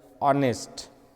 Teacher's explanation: In the word honest, H is silent.